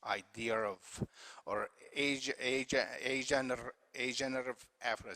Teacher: some speakers in RP insert what is called intrusive, inserted R sound